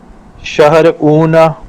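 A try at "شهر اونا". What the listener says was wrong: शहर ऊना, खींचना नहीं है बाप को, डायरेक्ट ऊना, शहर ऊना।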